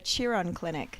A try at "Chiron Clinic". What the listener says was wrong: It's actually the Chiron Clinic. I won't hold it against you.